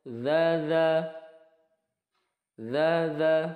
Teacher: dza panjang dua harakat ukurannya adalah seperti tangan kita menggenggam kemudian melepaskannya